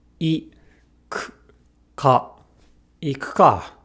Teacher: As you can see, the U is between two Ks, two unvoiced consonants. Thus, the U gets devoiced. We do not engage our vocal cords when saying it. So, rather than saying ku, we just say k with no vowel.